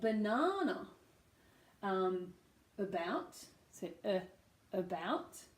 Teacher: you can hear the unstressed syllable becoming schwa